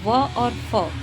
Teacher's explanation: होठ और दांत दोनों की सहायता से बोले जाते हैं। निचले होठ और ऊपर के दांतों की सहायता से। तो ये दंतोष् ध्वनियां है व और फ।